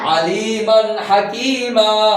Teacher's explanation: শব্দের শেষে দুই জবর হলে ওয়াকফের সময় একটি জবর পড়ে যায় এবং তাকে এক আলিফ পরিমাণ টেনে পড়তে হয়। তাকে মাদ্দে ইওয়াজ বলে।